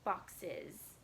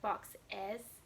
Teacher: Okay, now just like with an S, it can make a Z sound. The ES can have a schwa for an E, so sometimes it sounds like is. Boxes. Okay, instead of box S, box is.